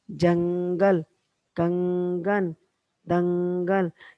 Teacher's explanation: हम जब इन शब्द का उच्चारण करते हैं ना तो हमारे नाक से ध्वनि आती है